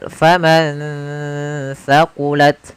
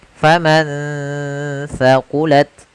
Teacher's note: Kemudian contoh yang terakhir pada lafal faman thaqulat, yaitu ada nun sukun bertemu dengan huruf tha, maka nunnya disamarkan ke huruf tha. Faman thaqulat, sambil ditahan gunnahnya.